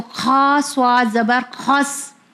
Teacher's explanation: بٹ یہاں پہ ہم دیکھیں گے ہا درمیانی حلق سے ادا ہوتا ہے اور کھا ہمارے پہلے حلق کے پارٹ سے ادا ہوتا ہے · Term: حرف حلقی